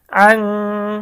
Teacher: অস্পষ্ট গুন্না বলার কারণ হচ্ছে এই গুন্নাটা নাকের থেকে আসে।